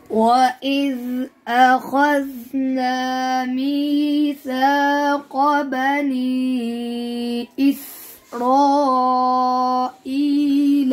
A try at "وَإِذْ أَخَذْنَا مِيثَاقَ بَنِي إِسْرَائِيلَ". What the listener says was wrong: आपने सीन की प्रैक्टिस करनी है, उसमें सही सीटी आए।